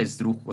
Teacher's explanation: Incluso hasta la palabra esdrújula, o sea, el tipo de palabra se acentúa porque esdrújula está en una, dos, tres, cuatro sílabas. Y se hace la fuerza en la antepenúltima, en la dru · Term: palabras esdrújulas